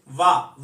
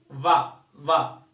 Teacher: वा का उच्चारण स्थान दांत और होठ है देखो वा वा अपन बोलते हैं तो ऊपर के दांत नीचे वाले होठों को टच करेंगे